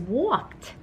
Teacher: our suffix is e d but it sounds like t